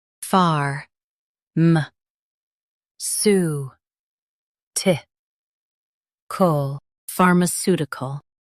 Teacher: Stress the su syllable and keep ti light.